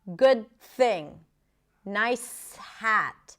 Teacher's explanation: we just want to glue those consonants together without adding vowels in between